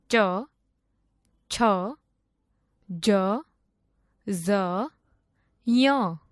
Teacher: જે વર્ણોનું ઉચ્ચારણ તાળવા માંથી કરવામાં આવે તેને તાલવ્ય વર્ણો કહે છે